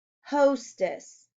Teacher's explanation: That's the long O in the first syllable.